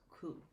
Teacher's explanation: example uh words that she wants to say such as school she might produce it as cool so she's leaving off that S